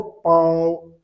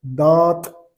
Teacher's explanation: आप बोल के देखो तो मुंह से भी हवा निकलेगी और नाक से भी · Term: अनुनासिक